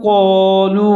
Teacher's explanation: قوف اور الف دونوں موٹے پڑے جائیں گے، الف قوف کی وجہ سے موٹا پڑا جائے گا